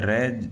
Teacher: र जो र का उच्चारण करते हैं तो जीवा क्या होती है? कंपन करती है। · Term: प्रकंपित